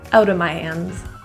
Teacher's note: Out of often is pronounced as outa, out of my hands.